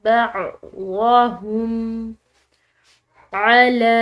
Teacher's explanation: لام کے اوپر کھڑی زبر کی وجہ سے اس کو ہم نے عام زبر کے مقابلے میں کھینچ کر ادا کیا